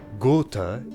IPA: gʊːtə